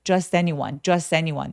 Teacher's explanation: Just라는 단어는 워낙에 그냥 많이 쓰는 단어이기도 하고 그래서 t 발음을 아예 안 하는 사람들이 많아요.